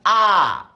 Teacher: আ স্বরধ্বনি উচ্চারণের সময় ঠোঁটের উন্মুক্তি কেমন থাকে? একেবারে খোলা, আ। পুরা মুখে আস্ত তরমুজ ঢুকে ফেলবা।